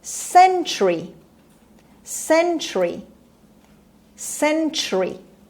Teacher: and the stress is at the beginning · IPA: /ˈsentʃəri/